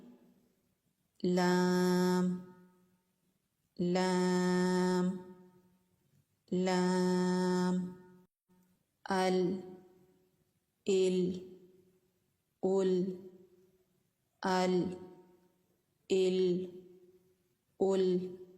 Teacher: لام کو ادا کر کے دیکھیں کہ زبان کا یہ والا حصہ یہ سامنے والے جو دانت ہیں ان کے مسوڑوں سے لگتا ہے۔ نوک نہیں لگانی، کنارہ لگانا ہے۔